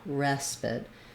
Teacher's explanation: So when we're talking about respite, we have first syllable stress. So this letter E is going to say our sound, like in dress or desk, or the word red.